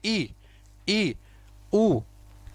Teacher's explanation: ई, ई देखो हल्का सा खुल रहा है, लेकिन लगभग लगभग पूरा मुंह क्या हो रहा है? बंद हो रहा है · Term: समृत स्वरों